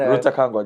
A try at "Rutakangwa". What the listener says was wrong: Joseph Rutakangwa. Rutakangwa. Rutakangwa. Ka. There's a K.